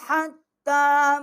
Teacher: یہ بڑی والی ہا ہے، یہ حلق کے ساتھ سے نکلے گی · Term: حلوے والی ہا